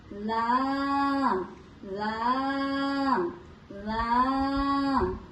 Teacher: জিহ্বার আগার কিনারা সামনের উপরের এক পাশে দাঁতের গোড়ার সঙ্গে লাগাইয়া